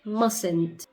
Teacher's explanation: You see the first t is silent.